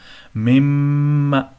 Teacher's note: یہاں پر میم مشدد ہے، غنہ ہوگا